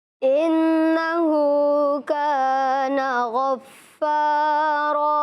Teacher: انہو میں ہو, ہا کے اوپر جو الٹی پیش اس کو انہوں نے کیا کیا ہے, کھینچ کے پڑھا ہے کیونکہ کھڑے زبر کھڑے زیر اور الٹے پیش کو کھڑی حرکات کہتے ہیں اور انہیں حروف مدہ کی طرح ایک الف یعنی 2 حرکات کے برابر کھینچ کے پڑھتے ہیں.